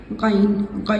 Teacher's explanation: गन हमारा ऊपर के हलक से अदा होता है। गन यानी अक्सा हलक से।